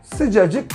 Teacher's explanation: sıcak kelimesinin sonundaki sessiz harfi düşmüş olur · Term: Ünsüz düşmesi